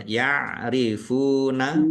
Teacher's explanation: Ya ain ya, ya'rifuna, fa domah wawu sukun, mat tobi'i, panjang 2 harokat.